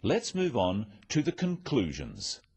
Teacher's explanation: stressing conclusions because it's the key word in this sentence